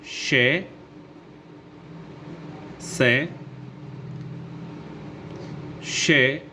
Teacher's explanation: इन व्यंजनों को उच्चारण वायु को धीरे धीरे रोककर रगड़ के साथ निकाल कर किया जाता है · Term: उष्म व्यंजन